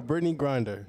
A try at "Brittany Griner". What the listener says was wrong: Griner, not there's no D in her name.